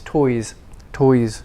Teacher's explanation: toys ends in a vowel vowels are voiced oy so the s becomes voice